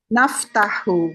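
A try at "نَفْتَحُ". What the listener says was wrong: Ahsanti, ahsanti.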